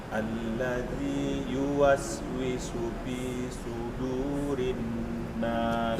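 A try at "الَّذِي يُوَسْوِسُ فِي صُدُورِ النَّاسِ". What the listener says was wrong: Yang pertama, hati-hati dengan huruf ini, jangan baca pi tapi fi. Cara bacanya ujung gigi di atas, bibir bawah bagian dalam. Fi, fi, su. Dan huruf yang kedua hurufnya sad. Su. Jangan su. Karena kalau jadi su hurufnya jadi sin. Su, so, si, su, fi, sudu.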